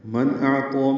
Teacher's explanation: نون ساکن کے بعد حمزہ آنے کی وجہ سے اظہار ہے، نون کی آواز ظاہر کر کے پڑھیں گے، حمزہ کو ظاہر کر کے پڑھنا ہے.